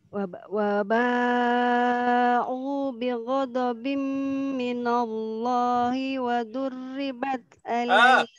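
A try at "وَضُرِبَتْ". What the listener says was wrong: Waduribat, rohnya enggak boleh ditasydidkan saja.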